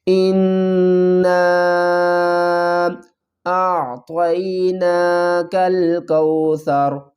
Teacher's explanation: تو آپ نے اس بات کا خیال رکھنا ہے کہ نون کے اوپر غنہ بھی پورا کرنا ہے اور آگے جو مد آ رہی ہے اس کو بھی 3 الف کی مقدار کھینچ کر پڑھنا ہے